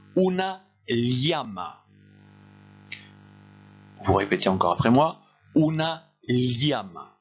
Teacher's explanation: le double L qui se prononce comme un L suivi d'un I